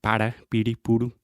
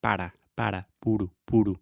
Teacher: the tip of your tongue is actually touching the top of your mouth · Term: Portuguese R